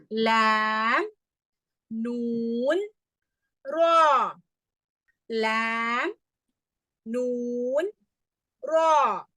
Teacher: நுனி நாக்கை மேற்பற்களின் ஈறுகள் தான் எல்லாமே அருகில் தொடவும், சற்று மேலே தொடவும், ஈறுகளுக்கு மேலே தொடவும்.